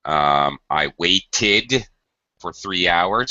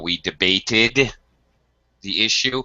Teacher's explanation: You have to be very careful about pronunciation of past tense verbs because this ed ending has 3 different pronunciations. It can sound like id after a t or d. I waited for 3 hours, for example.